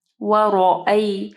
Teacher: را کو ہیوی پڑھنا ہے، را کے اوپر زبر ہے